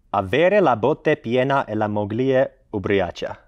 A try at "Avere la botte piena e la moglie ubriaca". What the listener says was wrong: I don't, just, why are you going like deeper with your voice when you're speaking? Avere la botte. Like, it's not Russian, just relax.